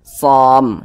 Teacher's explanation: Jangan dibaca somi, jangan, tapi som itu. Huruf mimnya ini kita sukunkan. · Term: mad arid li sukun